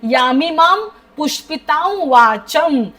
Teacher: यमिमा म वरती अनुस्वार त्याचा उच्चार म होणार आहे · ता च्या वरचा अनुस्वार पुढे व असल्यामुळे हलंत व असा होणार आहे तुम्ही हा शब्द कंटिन्यूअस वाचा तुम्हाला डिफिकल्टी येणार नाही श्वास घ्यायचा